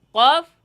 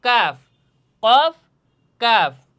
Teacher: কফের উচ্চারণের জায়গায় জিহ্বার গোড়া আর কাফের উচ্চারণের স্থান হচ্ছে জিহ্বা থেকে গোড়া থেকে একটু সামনে আগাইয়া